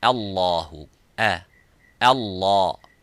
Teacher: La mufakham, but the alif is muraqqaq.